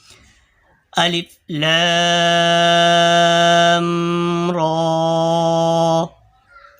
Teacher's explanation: را زبان کا کنارہ پشت سمیت دانتوں کی جڑ سے ادا ہوتا ہے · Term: را کا مخرج